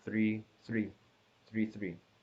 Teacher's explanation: same so it's a flat tone but what kind of platform it's a mid flat but more specifically it's 3 3 · the end of the syllable this one you could already guess the start and the end is the same so it's a flat tone